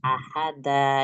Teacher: Ahada itu mad iwat tadinya. Karena di akhir kata dibaca jadi dua harakat. Ahada. Dibaca fathah dua harakat.